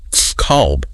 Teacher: And reading the mechanics of the letter kaf, that is a heavy letter, right? The very back root of the tongue has to elevate and strike the fleshy part of the upper palate. It creates this deep, resonant, slightly hollow sound. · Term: the letter qaf